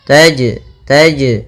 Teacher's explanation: ini ada jim sukun atau jim mati, maka ia kita namakan dengan bacaan qalqalah, yang mana suara jimnya harus memantul. Taj, taj, tapi tidak disaktah seperti ini.